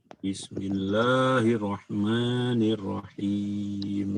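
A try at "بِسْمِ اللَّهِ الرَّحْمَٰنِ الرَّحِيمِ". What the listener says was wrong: Ya, sebentar. Boleh ditekankan lagi pada tasdid ya. Bismillah. Lihat di sini Bismillah berwarna merah di sini ya. Lihat ada 3 huruf tasdid di sini.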